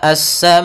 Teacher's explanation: Kemudian pada lafal sama, as-sama'u, di sini ada mad wajib muttasil, yaitu adanya huruf hamzah yang datang setelah huruf mad, maka ia kita panjangkan sepanjang 4 harakat